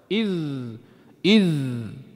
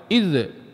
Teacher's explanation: Huruf za. Dah, makhraj dia hujung gigi. Letak ya. Iz.